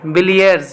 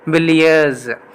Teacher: here the word ends with s, but it pronounced as z